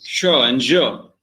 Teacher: produced by a stop closure that is released with a lot of friction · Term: affricates